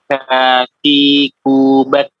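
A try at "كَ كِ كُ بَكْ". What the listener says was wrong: Baik, nafasnya belum mengalir. Nafasnya belum mengalir ya. Ka. Tidak ka. Ya, tidak terputus seperti itu. Ka. Ki. Ku. Bak. Tidak seperti itu. Tapi ka. Nafas mengalir ya. Nafasnya mengalir. Ka. Ki. Ku. Bak.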